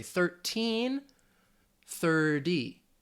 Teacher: especially in American English, we tend to use that flap T, which sounds more like a D sound, like a soft D sound. So I'd say 1330.